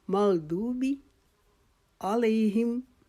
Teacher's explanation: मग़दूब को हम एक अलिफ के जितना लंबा करेंगे, लेकिन बी को नहीं खींचेंगे, बी को जल्दी से पढ़ लेंगे